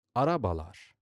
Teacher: A perfect example is the plural suffix, which is either lar or ler. Araba ends in a, a back vowel, so it becomes arabalar. · Araba ends in a back vowel, so it becomes arabalar. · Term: two-way vowel harmony